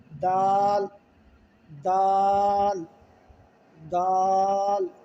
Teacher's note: زبان کی جو نوک ہے سامنے والے دانتوں کی جڑوں سے لگائیں گے، دال ادا ہوگا، وہاں سے لگا کر جو ہی پڑھیں گے تو یہ سمپل سے ادا ہو جائے گا، دال۔